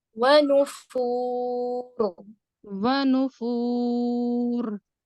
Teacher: ٹھیک ہے, یہاں پہ دیکھیں آپ واو دو ہیں, ٹھیک ہے, دونوں پہ مشدد ہے, بٹ صرف ایک واو پہ آپ نبر کریں گے. دوسرے واو پہ یہاں پہ کیا ہوگا, 50% غنہ ہوگا اور 50% آپ واو کی مخرج پہ ہوں گی